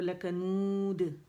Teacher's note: جب دال پہ آئیں گے یہاں پہ ہم نے قلقلہ کرنا ہے باریک والا، کیونکہ یہاں پہ ہم کیا کریں گے یہاں پہ ہم نے اس کو ساکن کر دینا پڑھتے ہوئے، شکل یہی رہے گی لیکن ساکن کر دیں گے، ٹھیک ہے۔